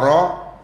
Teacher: dia bukan syiddah dia jahar tapi dia tawassud angin tak keluar ro tapi dia tawassud Ro jangan Dis syiddahkan dia jadi ro